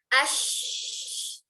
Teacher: Huruf shin punya sifat mengalir suara, mengalir nafas ketika sukun.